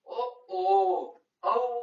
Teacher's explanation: ಔ ಅನ್ನೋದು ಕಂಠ ಮತ್ತು ಓಷ್ಠಗಳಲ್ಲಿ ಹುಟ್ಟುವುದರಿಂದ ಇವನ್ನು ಕಂಠೌಷ್ಠ್ಯ ಎನ್ನುತ್ತಾರೆ